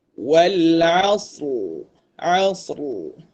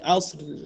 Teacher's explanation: Ada bunyi ra hujung. Ra yang tebal. Dia bukan ra yang nipis.